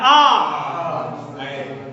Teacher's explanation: खुला हुआ और सबसे ज्यादा खुलता है।